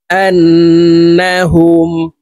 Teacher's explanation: তাসদিদ হইলে সর্ব অবস্থায় নাকের বাসি থেকে গুন্না করিয়া পড়িতে হয় তো আমরা এই হামজা তাশদি নুনের সাথে গুন্নার সহিত পড়বো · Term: গুন্নাহ